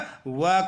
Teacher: जैसा कि दोस्तों दंतोष्ठ शब्द जो है वह दंत और ओष्ठ शब्द से मिलकर के बना है, यानी जब हम वह का उच्चारण करते हैं तो हमारी जीवा दांतों में लगती है और होठ भी कुछ मुड़ते हैं। दांतों और होठ का सम्मिलित उपयोग से वह का उच्चारण होता है, इसलिए इसका उच्चारण स्थान दंतोष्ठ है और वह को दंतोष्ठ वर्ण कहते हैं।